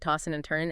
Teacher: the D and N might blend